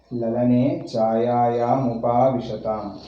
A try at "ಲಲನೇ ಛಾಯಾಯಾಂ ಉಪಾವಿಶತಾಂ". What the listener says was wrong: ಅದೇ ಉಪವಿಶತಾಂ ಅಲ್ಲ, ಉಪಾವಿಶತಾಂ. ಅದು ಸ್ಪ್ಲಿಟ್ ಮಾಡು ಗೊತ್ತಾಗ್ತದೆ.